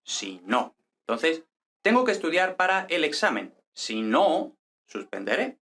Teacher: si no lleva el acento prosódico en no